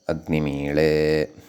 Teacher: ईडे एतस्मात् पूर्वं अग्निम् इति यद् वर्तते तस्य इकारः उदात्तः वर्तते · ईळे इत्येतस्य यः अनुदात्तः वर्तते, यतः ईळे इति सर्वानुदात्तः विहितः खलु, अतः सः अनुदात्तः ईकारः प्रकृते स्वरितः भवति